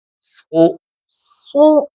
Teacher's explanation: سین اور صاد کا مخرج ایک ہے، لیکن صاد موٹا کر کے پڑھا جاتا ہے، حروف مستعلیہ میں سے ہے۔ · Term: صاد پیش